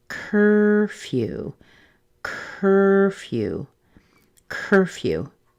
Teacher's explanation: So this would be the same as in words like her and fur, just cur. The few part sounds just like the word few. It is going to be a secondary stress. So we have the y in there and a little oo at the end.